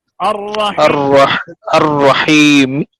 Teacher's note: اس میں حرکت کا تیسرا حصہ ظاہر کیا جاتا ہے، زیر کا تیسرا حصہ ظاہر کیا جائے گا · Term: وقف بالروم